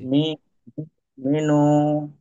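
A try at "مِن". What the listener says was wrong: না, মিনু হবে না, ব্যাপার এটাই। এটাই কায়দা। দেখেন নুন সাকিনের, এটা তো নুন সাকিন। নুন সাকিনের পরে পরক্ষণে দেখেন তো বা এসছে কি? বাজ, তাই তাহলে ওই বাকে পড়েছি আমরা নুন সাকিন ও তানমিনের পরে, তানমিনের বামে ইকলাবের হরফ অর্থাৎ বা থাকলে নুন সাকিন এবং তানমিনকে মিম দ্বারা পরিবর্তন করে গুণের সহ পড়তে হবে। মিম বাদি, মিম বাদি।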